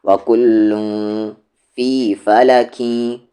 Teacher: تنوین کے بعد یا ہے تو یہاں پر ادغام وتھ غنہ